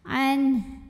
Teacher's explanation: Di sini ada hukum idhar halqi karena ada nun sukun menghadapi huruf halqi atau huruf tenggorokan yaitu H. Maka nun sukun dibaca jelas, N tidak ditahan.